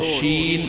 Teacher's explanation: شین کا مخرج وسط لسان، یعنی جب ہم زبان کے درمیانی حصے کو اس کے مقابل اوپر کے تالو سے لگاتے ہیں تو شین ادا ہوتا ہے۔